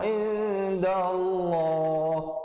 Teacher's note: lafzul jalalah datang sebelumnya baris fathah, dibaca tebal, kadar panjang dua harakat.